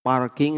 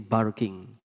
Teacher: Orang Arab P itu nggak bisa. P itu jadi ba.